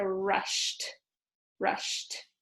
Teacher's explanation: since it's unvoiced, when you add ed, it just makes the t.